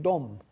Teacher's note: Polish has words like dom, which is the word for house, and that ends in a voiced sound, right? Dom doesn't become domp.